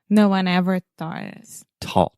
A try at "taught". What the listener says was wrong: I'm not sure why you want to put a TH in the beginning of the word.